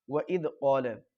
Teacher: وَإِذْ کے دال کو اچھی طریقے سے صاف پڑھیں، زا اور زوا کے مشابہ نہ ہونے پائے، دال بالکل باریک ادا ہوتا ہے۔ وَإِذْ قَالَ، قاف کے ساتھ الف مدہ ہے، لام کو کھینچنا نہیں ہے۔